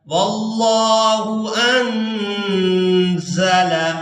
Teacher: واللہ انزل، یہاں نون ساکن پر اخفا کریں گے، یعنی نون کی آواز کو ناک میں چھپا کر ادا کریں گے